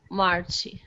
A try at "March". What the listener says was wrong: Also be careful about March. It's March. Yeah, don't add the extra vowel sound after. Not Marchy. March.